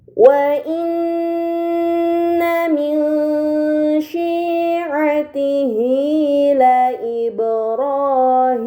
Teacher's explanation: nun sukun tersebut harus dibaca secara samar dengan gunah yang dipanjangkan · Nun bertasdid maka dibaca dengan gunnah yang dipanjangkan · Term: ikhfa Hakiki